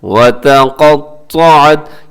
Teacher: اس میں آپ نے تا کو باریک رکھنا ہے۔ آگے قاف بھی موٹا پڑھا جائے گا اور قاف کے ساتھ جو ہے طا وہ بھی موٹا پڑھا جائے گا